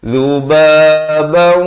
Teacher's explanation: Zubabau, masuk berserta dengung. Asalnya zubaban, datang waw jadi zubabau, dua harakat dengan dengung.